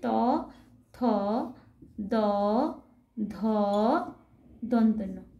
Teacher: এদের উচ্চারণ স্থান হচ্ছে দন্ত, অর্থাৎ জীব দাঁতকে স্পর্শ করে এই বর্ণগুলি উচ্চারিত হয়, তাই এই বর্ণগুলিকে বলা হয় দন্ত বর্ণ।